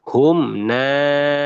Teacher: Izhar syafawi, jelas di bibir. Maka bacaannya hum naimuna. Ya, tidak didengungkan, tidak ditahan.